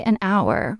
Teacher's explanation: the h is silent. So it starts with a vowel sound.